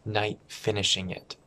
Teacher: Again, a glottal stop, the T before the F.